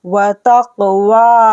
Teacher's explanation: वाव को खरा ज़बर खींचना है, वा हा अलिफ ज़बर हा को भी खींचना है 2 सेकंड के लिए, वाव को भी। · काफ पर कलकला करना है हमें। वाव को खरा ज़बर खींचना है